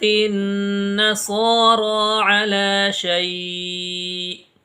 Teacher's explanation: نون کے اوپر تشدید آئی، اس لیے یہاں پر گنہ کریں گے، اور صا اور را یہ دونوں کھینچ کے پڑھے جائیں گے، کیونکہ ان کے اوپر کھڑا زبر آیا ہوا ہے، اور یہاں بھی کھڑا زبر ہے۔